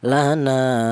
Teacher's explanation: Berhubung ada alifnya, alif mentobi'i, maka nun ini dipanjangkan dua harakat atau dua ketukan